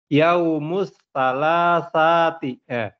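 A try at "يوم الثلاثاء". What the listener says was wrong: Thulatsa. Bukan thalatha. Thulatsa. Thula.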